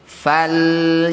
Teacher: Jadi sederhananya ain ini cara bacanya dialirkan tapi sedikit saja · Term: tawassut